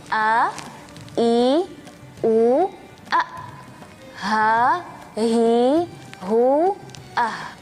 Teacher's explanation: Kita praktik lagi ya huruf hamzah dan huruf H dari e makhraj tenggorokan bagian bawah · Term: huruf hamzah dan huruf ha